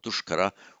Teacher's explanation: with the S preceded in the same word by a vowel other than a, it becomes sh, not duskara, but dushkara.